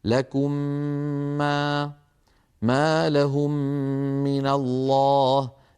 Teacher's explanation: تدغم الميم الساكنة إذا أتى بعدها حرف واحد وهو الميم مع تطويل الغنة أكمل ما تكون، نحو لكم ما لهم من الله. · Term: الإدغام